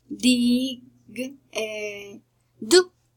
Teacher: we have the voiced alveolar plosive, d, d. In this case, there, dig, do.